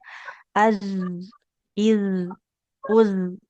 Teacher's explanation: Nggak boleh ada kayak bunyi e-nya di ujungnya. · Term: huruf zal